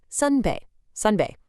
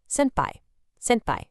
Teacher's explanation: the Korean O sound predictably shifts to an E sound in Japanese, while that final N consonant stays exactly the same. So, sun seamlessly becomes sen, or sun.